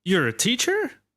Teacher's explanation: with rising intonation not falling intonation